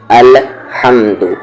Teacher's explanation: یہ جو ہا ہے جو جیم کے بعد آتا ہے اس کا مخرج ہے مڈل تھروٹ